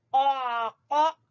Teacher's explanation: قاف زبان کی جڑ سے